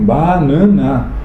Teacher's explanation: É um aberto, um fechado e um anasalado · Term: três pronúncias de A